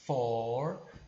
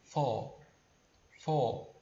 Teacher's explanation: Você pode tanto pronunciar for, né, puxando o R, né, for, como se você quiser, você pode apenas alongar o som e não puxar o R. Falar assim, for, for, em vez de for, tá?